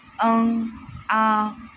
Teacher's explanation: जैसे कि अ आ इ और अनुनासिक में हवा जो [गला साफ़ करने की आवाज़] है मुंह और नाक दोनों से आता है। अ आ मतलब मुंह और नाक का दोनों का उपयोग किया जाता है।